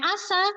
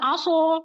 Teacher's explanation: yang harusnya bacanya asa menjadi tebal aso itu sudah mengubah mengubah makna